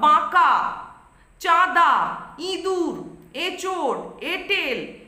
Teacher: স্বরধ্বনি যখনই চন্দ্রবিন্দু যোগে উচ্চারিত হচ্ছে অর্থাৎ তা নাসিকার সাহায্যে উচ্চারিত হয়। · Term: সানুনাসিক স্বর